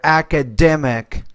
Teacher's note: So stress is on that third syllable there